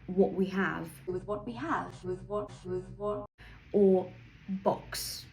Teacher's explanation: So firstly, I noticed that some vowels I used to say a bit differently. Like now I would say words like what a bit more back